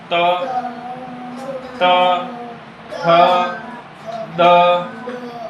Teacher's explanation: जीभ जो है आपकी पहले दांत को स्पर्श कर रही है और फिर हल्का सा धक्का लग रहा है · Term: त वर्ग